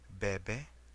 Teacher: When either of the letter is between two vowels, the sound is formed kind of like the English V, except that the sound is made by touching the lips together instead of the upper teeth and the lower lip.